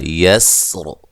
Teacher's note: سین کو باریک سیٹی سے ادا کرنا ہے، ہلانا نہیں ہے۔ اور اس را کے بارے میں یہ بات یاد رکھیں، یہ را وقفاً جب وقف کریں گے اس کو موٹا بھی پڑھ سکتے ہیں، باریک بھی پڑھ سکتے ہیں، یہ مختلف فیہ راءات میں سے ہے۔